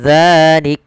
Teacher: Misalkan kalau kita waqaf pada lafal zalika, maka dimatikan kafnya, zalik. Matikan kaf dengan sifatnya, ada sifat syiddah dan sifat hamasnya.